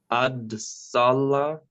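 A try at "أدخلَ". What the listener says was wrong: Nearly. The second letter is not a dal. No, it's not a dal. not a dal either. It's the same as, there we go. Same as the one that Arif said earlier. So this a raw. Arsala.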